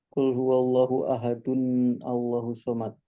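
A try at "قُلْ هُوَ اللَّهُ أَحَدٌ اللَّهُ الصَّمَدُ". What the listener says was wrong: Nah, itu nunnya nggak boleh hilang. Dia di kasroh. Ahadunil. Ahadunil. Jadi nanti dihidupkannya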